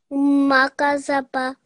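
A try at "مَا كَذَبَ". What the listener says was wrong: Very good. Makazaba. So again, fatha on the gaf, dhal and ba, all 1 second. Very good.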